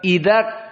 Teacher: Idzak, di saat kita membaca kaf yang pertama, jadikan dia syiddah. Maka di saat membaca kaf disukunkan, tidak ada keluar dari suara